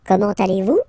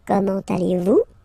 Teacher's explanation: it's a question, so raise a little bit your voice at the end